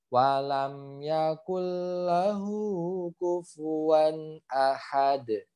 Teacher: dal yang sukun dia harus dipantulkan